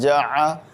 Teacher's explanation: عین کو حلق کے درمیان حصے نکالیں گے